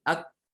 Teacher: huruf kaf ini dia suaranya tertahan tapi nafas mengalir ya. Suaranya tertahan, ak, kemudian nafasnya mengalir.